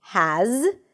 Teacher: there is a Z sound at the end, even though it's spelled with an S, it's a Z.